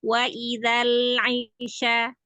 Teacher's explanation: Kalau hamzah di bawah tenggoroknya, kalau ain naik sedikit lagi.